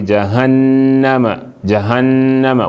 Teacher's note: Where you come on top nunun mushaddada, you go give you that ghunna, that nasal sound.